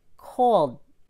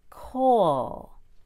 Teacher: This is a held D. I make the held D by starting to swallow or cutting off my air supply. As soon as I stop breathing, cold.